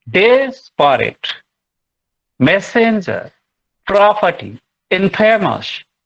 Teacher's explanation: Just dactyl is just the opposite of anapest. First strong, then followed by two weak.